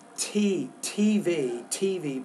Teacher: pronounce the T with a little bit more air